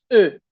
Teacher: Se pronuncia como e o también se pronuncia como esta de acá, e. Básicamente haces boca de o y dice una e. · Básicamente, haces boca de O y dices una E. Entonces tenemos E.